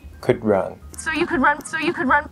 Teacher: Because we have to release the D to go into the R, you might hear a little bit of a D come out. It's supposed to be a glottal stop, but there's actually another very common thing that you can do here, which is to actually drop the D and go straight into the R.